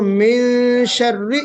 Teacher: شین جو ہے حرف مستعلیہ میں سے نہیں ہے، حرف استفال ہے، اس کو ہم باریک پڑھتے ہیں شین کو، تو اس لیے اخفا بھی باریک ہوگا